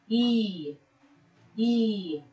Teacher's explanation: We can really feel that there is vibration when producing this sound, and that means this will fall under voiced consonant. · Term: palatal consonant